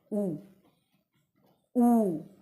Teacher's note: जब हम इन वर्णों का उच्चारण करते हैं तो या तो हमारा हमारे होठ जो है वो कोई आकार ग्रहण करेंगे जैसे उ और उ का हम बोलते हैं तो हमारा होठ जो है वो गोल आकार ग्रहण करते हैं